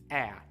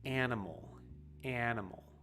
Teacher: the open a that is very common in american english right ah it comes from way in the back of your throat